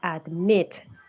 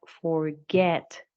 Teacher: the last syllable is the one that is stressed